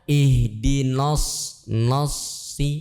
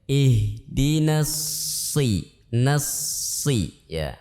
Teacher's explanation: Yang tebal hanya shadnya saja. Nunnya tipis ya.